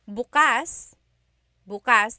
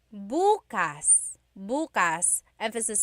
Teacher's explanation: If you say bukas, bukas, emphasis is on the first syllable. that means tomorrow.